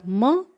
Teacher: म इस व्यंजन का उच्चारण स्थान है ओष्ठौ यानी 2 होठ नासिका के साथ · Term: अनुनासिक